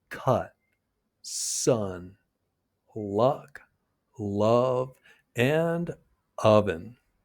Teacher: your tongue stays in the center of your mouth. It's a short neutral vowel. · for the uh your tongue's in the center and your lips are unrounded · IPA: /ʌ/